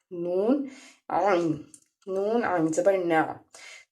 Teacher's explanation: नून आइन, नून आइन ज़बर ना, नून को जब हम पढ़ेंगे तो उसके बाद नून जो है वो जब हम पढ़ते हैं तो हमारी जो जुबान का कोना है वो ऊपर वाली जो दांतों की जड़ें हैं, जहाँ पे एक गोल रिंग सा बना होता है, उसके साथ टच करते हैं तो नून अदा होता है